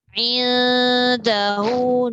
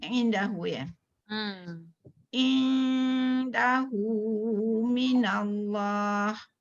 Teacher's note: Indahu nun bertemu dal tu dengung, tak boleh tinggal.